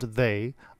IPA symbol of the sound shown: ðe